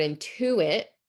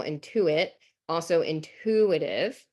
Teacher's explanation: So like in our word intuit, it's on the syllable in the middle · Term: stress pattern